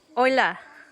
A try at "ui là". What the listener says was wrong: You're saying hola like hello in Spanish. Oi, la, oila.